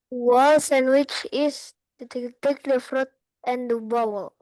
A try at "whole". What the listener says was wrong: Ini W-nya silent. The whole. Bacanya H-nya.